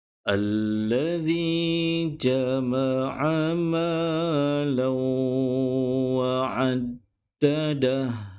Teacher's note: Tapi huruf waw tidak ada tanda sabdu seperti huruf lam di sini, menunjukkan ia perlu dimasukkan bacaan huruf lam kepada huruf waw dan perlu didengungkan dengan kadar 2 harakat